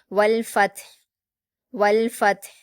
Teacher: हा को वक्फ करते हुए हम जज्म दे देंगे और हा को हलक से अदा करेंगे। तो हमें हा की आवाज़ को अच्छे से जाहिर करना है।